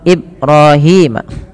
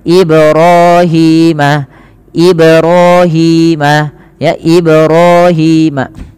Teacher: pada lafal ba yang dia berharakat sukun I dipantulkan dan ini bacaannya kita kenal dengan bacaan Qalqalah